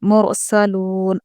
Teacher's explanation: الیکم مرسلون، را ساکن ہے. دیکھیے را ساکن سے پہلے والے حرف پر پیش ہے اس لیے ہم را ساکن کو پر پڑھیں گے